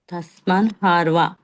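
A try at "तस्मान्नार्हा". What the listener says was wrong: తస్మాన్ ఆర్హ. వా కాదు, అది హ. తస్మాన్ ఆర్హ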